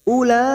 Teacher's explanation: Ula di sini ada huruf waw dianggap tidak ada. Kita baca pendek. Ula, mad yang bertemu dengan hamzah dalam satu kalimat, mad wajib mutasil.